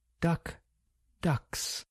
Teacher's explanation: K is voiceless and S is voiceless.